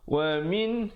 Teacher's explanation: Wa min, di situ izhar halqi, nun mati bertemu ha. Sempurnakan saja bunyi nun matinya.